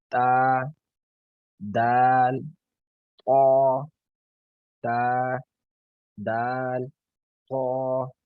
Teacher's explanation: زبان کی نوک دانتوں کے اندر، سامنے والے دانتوں کے اندر کی جڑ سے لگا کے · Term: حروف نطعیہ